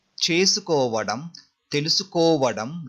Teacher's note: just we are replacing nu sound with vadam, but there will be a long vowel sound before vadam.